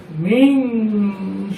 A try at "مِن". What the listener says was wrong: মেন তো করা যাবে না এখানে তো গুণা করতে হবে নাকের গুণা মেন অনুসার হবে মেন মেন আবার বলো